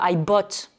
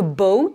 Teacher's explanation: I bought, c'est un son court, alors que boat, B-O-A-T, le bateau, c'est un son long.